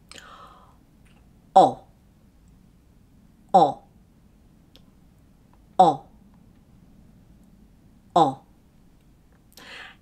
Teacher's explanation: Now notice my mouth shape. The lips are rounded and my jaw is open, so my tongue is low. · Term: back vowel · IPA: /ɒ/